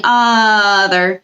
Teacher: That's the schwa sound at the beginning